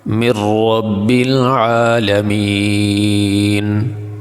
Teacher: وقف کرتے ہوئے نون کو ہلا کے نہیں پڑھیں گے، نون پہ قلقلہ نہیں کریں گے ، بالکل آرام کے ساتھ سانس کو مکمل کریں گے، وقف